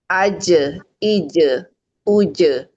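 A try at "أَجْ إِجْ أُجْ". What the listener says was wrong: Nah, ije, uje-nya dapat. Aja tadi yang pertama ada aja, aja. Jadi pantulannya dia kosong dari C-nya.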